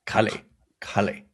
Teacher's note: Throw it farther in the back. It is closer to our Q sound, like the deepest you can make that ka.